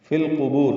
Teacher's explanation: فی القبور لام ساکن پہ اظہار قمری ، قوف پر بو لمبا کریں گے، وقفاً مد عارض سکون،